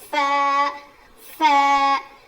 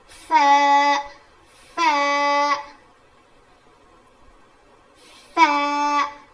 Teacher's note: سامنے کے جو دو دانت ہیں نا ہمارے، وہ نیچے کے ہونٹ پہ لگیں گے. فا، نیچے کے ہونٹ کے اندر کے حصے کو لگنے سے فا ادا ہوتا ہے.